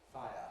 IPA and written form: ˈfaɪə (fire)